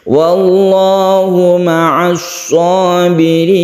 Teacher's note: lafaz Allah yang tebal karena sebelumnya ada fathah kemudian ditutup dengan mad alid lisukun.